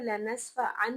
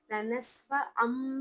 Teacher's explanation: हर्फ नून साकिन या तनवीन के बाद अगर हर्फ बा आए तो वहां पर हम जो नून साकिन की आवाज है उसको खत्म करके मीम की आवाज पढ़ते हैं। तो ऐन दो ज़ अन जो अन में नून की आवाज है उसको खत्म करके आइन मीम दो ज़ अम मीम की आवाज निकालेंगे।